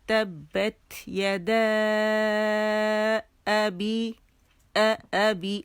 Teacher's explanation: جب پہلا کلمہ حرف مدہ پہ ختم ہو اور دوسرا جو ہو وہ حمزہ سے شروع ہو, 4 to 5 کاؤنٹ سے کھینچیں گے. ٹھیک ہے, تبت یدا ابی ابی, اور یہ حمزہ قطع ہے. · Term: مد منفصل جائز